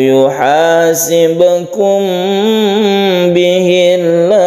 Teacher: Panjangkan sampai 3 alif tidak apa-apa, ini adalah mad arid lisukun.